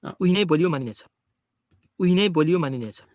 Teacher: on the last syllable there really is that kind of extra rise it's very common to have this kind of late rise there